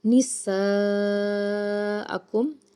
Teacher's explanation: सीन को जब अदा करेंगे सिटी की आवाज़ आनी चाहिए और मद है इसके ऊपर मद्दे मुत्तसिल, और क्योंकि इसी कलीमा में आपको हमज़ा नज़र आ रहा है 3 से 5 अलिफ के बराबर इसको खींच के अदा करेंगे